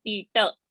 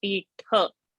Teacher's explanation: So Tha, that Mahaprana has to be deliberately said over there.